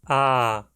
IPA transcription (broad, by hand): aː